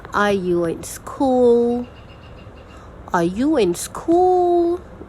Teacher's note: or no questions are the same as Polar questions you rise the major thing is rising at the end of the sentence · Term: rising tone